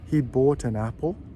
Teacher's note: the T of bought will join the A of an